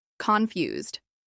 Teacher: This is pronounced with stress on the second syllable, confused.